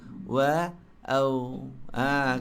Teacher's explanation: Kalau kita matikan au kan? Dia tak ada udara. Dia jahar. Adalah nipis tadi tapi sebut au.